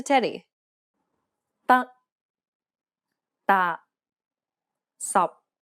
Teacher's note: the final p t and K are unreleased in Cantonese this means that you must not release a burst of air when pronouncing this sound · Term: final stops